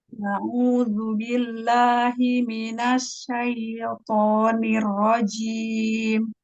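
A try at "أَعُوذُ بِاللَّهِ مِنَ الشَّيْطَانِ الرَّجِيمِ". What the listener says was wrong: Ya, huruf shinnya ke tengah lidah lagi, makrotnya mundurkan lagi. Asyaito, asyaito.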